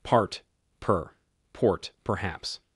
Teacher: In particular, the vowel in per is always rhoticized in GA. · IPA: /ɑ˞ː/